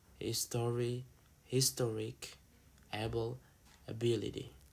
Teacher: And the third is postonic suffixes. They move the stress to the syllable before the suffix.